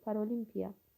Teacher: tələffüzü düzdür, vurğusu da düzdür. Paralimpiya. Vurğu 3-cü hecadadır.